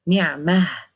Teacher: we have tied تاء at the end, we have to make it ساكن non-vowel and we have to turn it to be ها